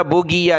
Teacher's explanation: اس کو آپ نے گاف نہیں پڑھنا، بُغِيَ نہیں، غین پڑھنی ہے